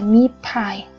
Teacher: chúng ta sẽ đồng hóa cái âm t này để cho nó giống cái âm môi ở đằng trước và nó phải là một âm voiceless, tại vì t đang là voiceless.